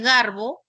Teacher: la O es posterior media